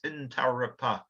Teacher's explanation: In Aboriginal pronunciation, there's no emphasis on any one syllable, so it's Intarapa. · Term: equal emphasis